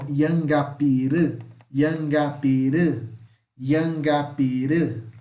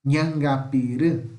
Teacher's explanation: Esse esse N aqui, ele tem som de NH, é o nosso dígrafo NH